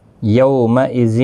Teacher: یو واولین ہے، تھوڑا نرمی کے ساتھ آدھے الف کی مقدار کے برابر کھینچ کر پڑھیں گے